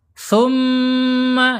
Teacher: mim bertasyid ini bacaannya gunah ya